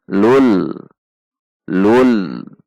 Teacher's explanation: masuk dengan tidak dengung dibaca ada tekanan namun tidak boleh panjang Lun Lun ada tekanan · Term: idghom Bilaghunnah, idgham bila gunnah